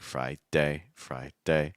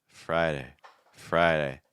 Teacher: The thing here is just see how light that fast D sound is in the middle.